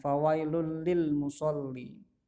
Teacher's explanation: dibaca melebur dan tidak berdengung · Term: Idgham bilagunnah